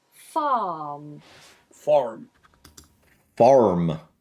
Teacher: when you're speaking with a West Country accent, we do pronounce the R